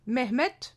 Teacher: cette règle phonétique de l'assourdissement des finales qui s'applique et qui explique un nom comme Mehmet avec la terminaison du T au lieu du D